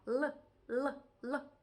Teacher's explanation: аж верхнього піднебіння і не просто торкнутися а зробити щось особливе нам потрібно загорнути наш язичок отаким чином і оцей от тильною стороною його торкнутися піднебіння і в нас вийде звук такий цікавий л завжди м'який завжди